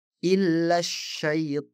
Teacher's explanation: Perhatikan dalam contoh pertama, kami benar-benar mengabaikan hamzah wasal dan lam. Dan saya menghubungkan alif pada kata illa langsung ke huruf syin dengan mengatakan illasyaitan.